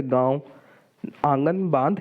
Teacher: इनके उच्चारण के समय हवा मुख और नाक दोनों से निकलती है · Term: अनुनासिक